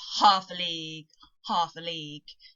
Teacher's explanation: you've got one stressed and then two unstressed syllables the stress is always on the first beat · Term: dactyls